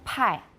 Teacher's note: you have stronger aspiration in mandarin